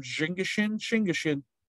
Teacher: Initial consonant change after a tense marker changes it to shingashin.